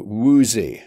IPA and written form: ˈwuː.zi (woozy)